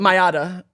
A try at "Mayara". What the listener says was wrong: No, but it's an R in there. Yeah, Mayara. Mayara. No, I'll roll the R. Mayara. Let it do a tap. Mayara. Mayara. Mayara. Mayara. My bad, Mayara.